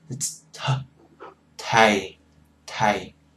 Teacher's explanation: TH sound, they pronounce it really lightly.